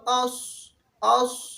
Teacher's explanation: سامنے والے جو دانت ہے وہ ایک دوسرے کے ساتھ لگ جاتے ہیں اس کی ادائیگی میں. صاد، اسی طرح سین، ز، اور یہ سختی کے ساتھ پڑھا جاتا ہے.